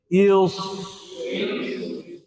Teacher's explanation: صفت رخوت بھی پائی جا رہی ہے، ہمس بھی پائی جا رہی ہے، اور صفت صفیر بھی پائی جا رہی ہے، استعلاء ہے، پر بھی ہوگا جی۔